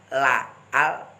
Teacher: lam ini makhrajnya ujung lidah ditekan di langit-langit bagian agak depan.